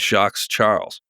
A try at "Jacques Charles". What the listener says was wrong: If you don't say the S in the Jacques.